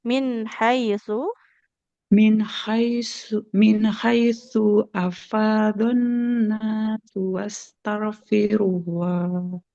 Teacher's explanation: H-nya enggak boleh panjang karena fathah enggak ada alif di depannya